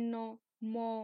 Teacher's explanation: শ্বাসবায়ু নাকের মধ্য দিয়ে বেরিয়ে এলে, যেমন দন্তের ন, ম, এগুলো হয় কি অনুনাসিক